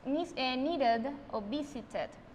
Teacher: no es como una e, es un sonido casi que muy opaco